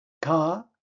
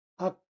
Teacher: First consonant released, 터진다. Final consonant unreleased, 안 터진다. Korean stops the 받침 before it finishes. · 가, the air comes out. 악, the air stops. Same letter, 2 different jobs.